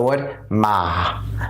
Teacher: in English simply translates to falling rising tone in order to pronounce this tone you're going to have to drop your voice go little down and you have to raise it back up